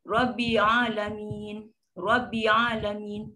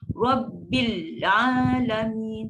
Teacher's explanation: Dan hamzah wasal dia hilangkan, lam sukun pun dihilangkan